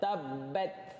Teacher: Ni kan, ta ni hujung lidah. Bila dia mati, huruf ta ni mati, sukun. Tabat. Akan ada keluar angin Hamas dekat situ.